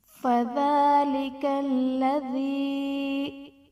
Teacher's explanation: ذال پر کھڑا زبر ہے جو کہ الف مدہ کے قائم مقام ہے، اس لیے اسے ایک الف یعنی 2 حرکات کے برابر کھینچ کر پڑھیں گے